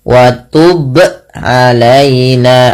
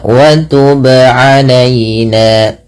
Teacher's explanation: Yang benar adalah dia memantulkannya tanpa berhenti, tanpa menambahkan hamzah. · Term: qalqalah